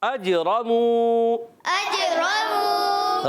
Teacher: را پر زبر ہے, موٹا ادا کریں گے. میم واو پیش مو, واو مدہ ہے, ایک الف کھینچیں گے.